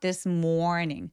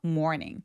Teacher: r이 있어서 모음이 조금 더 길게 표현이 되는 습관이 있어요.